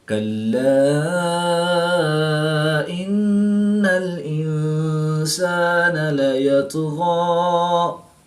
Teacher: کلا ان الانسان لیطغی، الف مدہ کے بعد حمزہ دوسرے کلمے میں ہے تو یہاں پر مد منفصل ہوگی، 2 سے 3 الف تک کھینچ کر پڑھے جائیں گے۔ نون مشدد میں ہمیشہ غنہ ہوتا ہے تو یہاں پر ہم غنہ آنی کر کے پڑھیں گے